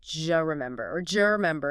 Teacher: The D sound at the end of do and the J sound like Y in yes at the beginning of U often merge together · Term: assimilation and reduction combined